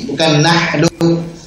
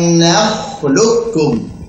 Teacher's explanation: Nah pakai kha, tebalkan kha-nya.